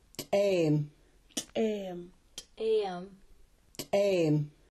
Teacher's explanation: A T with an apostrophe is called an ejective T. It's like the T, but ejected out of the mouth with a strong pop. It's in the Klallam word to sing.